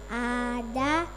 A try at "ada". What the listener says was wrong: Ada panjang. Tidak boleh panjang. Ada